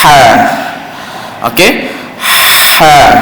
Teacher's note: angin tu keluar agak kurang agak perlahan kerana berlaku tekanan itu pada makhraj di tengah kerongkong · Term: Hamas